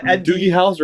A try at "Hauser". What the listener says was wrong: With an S, not a Z.